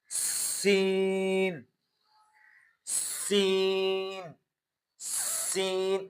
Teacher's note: حروف جس میں سیٹی کی آواز نکلتی ہے۔ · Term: حروف صفیریہ